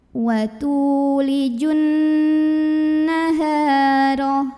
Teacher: wa tu mad tabi'i karena ada waw sukun sebelumnya dhammah. Maka cara membunyikan taknya adalah dipanjangkan 2 harokat.